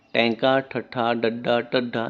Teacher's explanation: ਜਦੋਂ ਜੀਭ ਦਾ ਅਗਲਾ ਨੋਕ ਵਾਲਾ ਹਿੱਸਾ ਉਲਟਾ ਹੋ ਕੇ ਕੋਮਲ ਤਾਲੂ ਨਾ ਛੂਏ ਉਸ ਨੂੰ ਅਸੀਂ ਉਲਟ ਜੀਵੀ ਵਿਅੰਜਨ ਕਹਿੰਦੇ ਨੇ